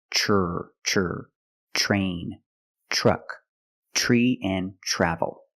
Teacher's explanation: Another situation where T makes a ch sound is TR. When you have TR together in any situation, you can pronounce it ter, but usually we don't. We pronounce it ch plus the R sound, chur.